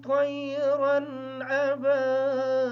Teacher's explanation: طیرن کی جو را ہے اس کی تنوین کا غنہ نہیں ہوگا